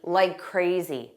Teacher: Because we have that k sound in crazy, so we won't say it in like crazy. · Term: connected speech